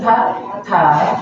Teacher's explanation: The tongue bends up and touches the hard palate. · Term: Retroflex T